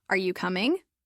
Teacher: when asking a yes no question, our pitch typically rises at the end.